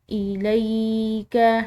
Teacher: یا ساکن کی وجہ سے لام کو ہم نے لمبا ادا کیا ہے